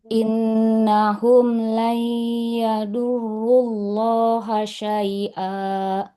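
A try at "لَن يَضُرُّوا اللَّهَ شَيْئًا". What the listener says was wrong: Layyadu. Huruf dotnya lebih tebal. Nah, hati-hati penekanannya jangan jadi di depan ya. Yadu. Yadu. Layyadurrullaha syai'a.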